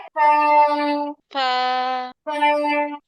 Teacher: উপরের দুই দাঁত নিচের ঠোঁটের পেটে লাগে।